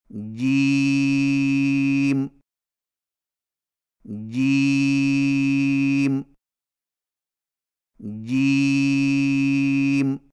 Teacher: جیم کی ادائیگی میں زبان کے درمیان کو تالو کے ساتھ سختی سے لگا کر باریک آواز میں پڑھیں